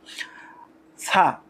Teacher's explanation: সা জিব্বার আগা, সামনের উপরের দুই দাঁতের আগার সঙ্গে লাগাইয়া শীষ ছাড়া নরম করে পড়তে হয়